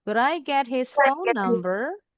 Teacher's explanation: Intonasinya naik karena ini yes no question.